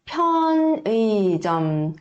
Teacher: As palavras que começam com piup, piup, também é uma consoante aspirada, tá?